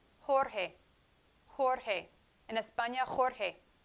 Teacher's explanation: j in spanish is similar to the h sound in english in spain however the sound is a little bit stronger